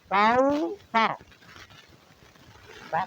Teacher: کل کاؤ کا، کل کو پتلا اور رقیق کر کے، کاؤ کی کاف کو بھی رقیق اور بریک کر کے پڑھیں گے۔ تا ہے، زبان کی نوک سامنے والے اوپر کے جو بڑے دو دانت ہیں ان کے کنارے پہ لگائیں گے، تو یہاں سے سا ادا کریں گے